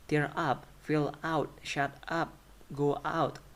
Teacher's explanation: The stress is not on main verb but on the particle.